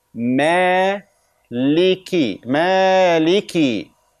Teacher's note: mim is light, alif is light, lam is light, and kaf is light and has kasra, not sukun.